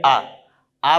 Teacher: जैसे बोल के देखिए आ बोलेंगे तो हमारे ऐसा महसूस हो रहा है कि आ का उच्चारण करने में हमारी जिह्वा का सबसे पिछला हिस्सा तालु के पास से ध्वनि निकल रही है, ऐसा महसूस होता है।